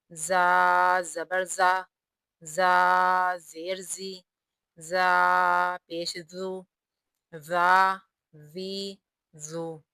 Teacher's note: زا کا مخرج زبان کی نوک اور مقابل کا تالو ہے، یہاں سے زا ادا ہوگا، زا سختی سے ادا ہوتا ہے